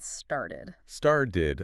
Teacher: That t often softens. It becomes more like a d sound.